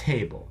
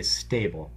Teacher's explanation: do you feel the puff of air with table that is not there with stable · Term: aspirated t